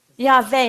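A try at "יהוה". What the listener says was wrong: No, because the second letter in from the right is a vav, and so it's a V sound. But in Christianity, it turned into a W.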